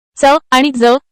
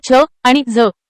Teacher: च आणि ज ही व्यंजने तालव्य अल्पप्राण आहेत तर छ आणि झ ही तालव्य महाप्राण आहेत.